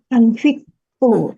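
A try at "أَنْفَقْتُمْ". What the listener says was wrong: Kok anfi? KKL itu fathah. Ya, anfaktum. Begitu ya, ibu-ibu, ingat Bapak Ibu, kalau KKL itu fathah. Kenapa dia kasroh?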